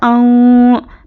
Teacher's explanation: حمزہ نون زبر اوں، تو یہاں پر نون ساکن کے بعد حرف اخفا آیا ہے، تو یہاں پر نون کی آواز کو ناک میں چھپا کر پڑھیں گے، اور اخفا کی مقدار 1 الف کے برابر ہے